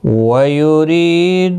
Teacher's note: ری یا مدہ ہے ایک الف کی مقدار کے برابر کھینچ کر پڑھیں گے، روزیر کی وجہ سے باریک ہوگا۔